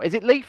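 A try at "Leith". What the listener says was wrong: Leaf. Leaf. Not Leaf. Leaf. You're not good with your THs, mate, though, so.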